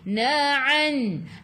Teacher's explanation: Ain daripada kerongkong bukan daripada hidung